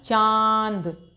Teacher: च ऊपर चंद्रबिंदु लग गई तो हमने मुंह और नाक दोनों से ध्वनि निकाली चांद आप पाएंगे इसमें कि मुंह हमारा थोड़ा ज्यादा खुलता है